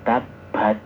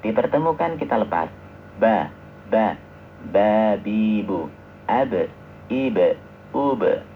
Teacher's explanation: Jadi kedua bibir itu kita pertemukan tanpa harus ditekan. Kalau ditekan nanti medok.